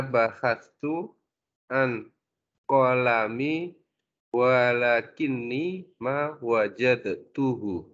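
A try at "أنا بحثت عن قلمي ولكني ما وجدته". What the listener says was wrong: Masya Allah. Ahsanta.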